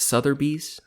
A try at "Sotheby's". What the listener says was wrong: Sotheby's. There's no R.